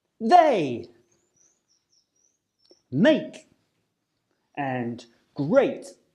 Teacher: the AE sound as in the words they make and great a is a diphthong sound which means it's a combination of two vowel sounds that are pronounced within the same syllable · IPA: eɪ